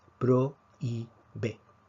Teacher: En prohíbe vemos que la fuerza está sobre la I, prohíbe. Nuevamente, recordemos que la H es invisible para efectos de silabeo, por lo tanto tenemos una secuencia de vocal abierta con vocal cerrada y la fuerza cae sobre la vocal cerrada. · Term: acento de hiato